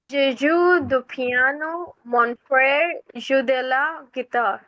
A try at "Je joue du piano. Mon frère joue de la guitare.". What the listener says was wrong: Good for you. Thank you.